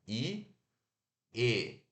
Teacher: No E, a ponta da sua língua foi bem pouquinha coisa para baixo, quase nada. I, E. O E, a sua língua desceu bem pouquinho.